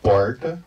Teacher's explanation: les r paysans c'est les r retroflex